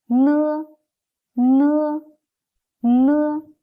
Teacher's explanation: When we pronounce it, the tongue tip is pressed against the upper alveolar ridge, and the air is let out through the nasal cavity with the vibrations of the vocal cords. It sounds like N of no. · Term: alveolar nasal